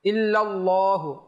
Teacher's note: আল্লাহ শব্দের লাম মোটা হবে